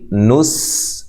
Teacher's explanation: سین باریک سیٹی سے ادا کرنا ہے، اس کو بھی ہلانا نہیں ہے